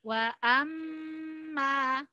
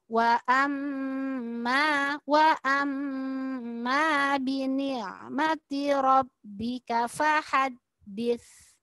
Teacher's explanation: Ada mim tasydid kemudian ada alifnya. Maka mim tasydidnya harus lebih lama daripada alifnya.